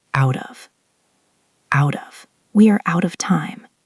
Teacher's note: Think of the phrase out of o u t and o f. Again, the t is caught between vowels, so it becomes out of like a soft d. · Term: flap t